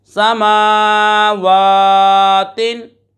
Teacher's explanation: हुरूफ़ मद्दा को एक अलिफ यानी 2 हरकत की मिकदार तक खींच कर पढ़ते हैं। इस तरह खड़ी हरकत को भी एक अलिफ यानी 2 हरकत की मिकदार तक खींच कर पढ़ेंगे।